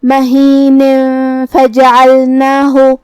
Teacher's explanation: ہم یہ تنوین کو چھپاتے ہوئے لیکن غنہ کے ساتھ یہ حکم کو ادا کریں گے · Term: اخفاء